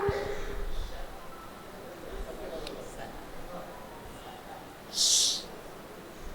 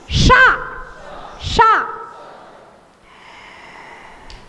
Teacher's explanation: तालू से जीभ लगती है तब बोलता है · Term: तालव्य सा